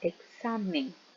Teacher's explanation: La fuerza de voz recae en la penúltima sílaba, por lo tanto es una palabra grave.